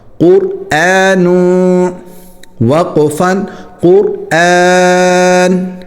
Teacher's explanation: قاف را دونوں موٹے ہونے چاہیے اور حمزہ جو ہے وہ باریک ہونا چاہیے اور نون پر اخفا ہوگا